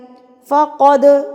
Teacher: باللہ، فقد، دال پہ قلقلہ، دال کو ہلا کے پڑھیں گے. جب دال کے اوپر جزم آئے گی یا سکون کی علامت آئے گی تو دال کو ہلا کے پڑھا جاتا ہے، قلقلہ کر کے پڑھا جاتا ہے